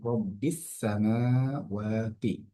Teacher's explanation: এখানে মিম এবং ওয়াবের মধ্যে খাড়া জবর আসার কারণে একাধিক টান হলো